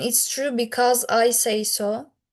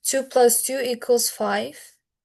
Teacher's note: You go up and then you fall. It's a more argumentative sound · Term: rise fall inonation